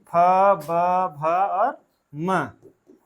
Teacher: फ ब भ और म, इन 5 लोगों का उच्चारण स्थान ओष्ठ है।